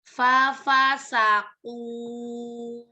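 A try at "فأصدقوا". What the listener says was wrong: Lebih lagi udaranya.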